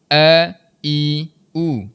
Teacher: huruf hamzah yang keluarnya di bahagian rongga kerongkong bahagian bawah sekali yang er bahasa mudahnya kita lepas Aje suara kita.